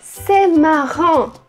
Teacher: o AN, ele tem um som bem fechado. Ele é quase O, mas não é O. Então, tem uma diferença, não muito grande, entre ON e ON. · o AN, ele é assim, é o que a gente chama de uma nasal, nasalizada. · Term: nasais em francês